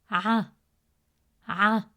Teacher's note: the letter ayn is one of the 9 deep letters in Arabic, pronounced from the middle of the throat.